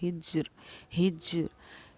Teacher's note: جیم پر کیونکہ جزم سکون تھا تو ہم نے یہاں پر قلقلہ کیا